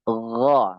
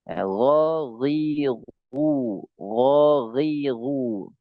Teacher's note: di langit-langit yang bagian lunak agak dalam sedikit. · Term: ghain